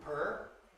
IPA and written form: pʰɝː (purr)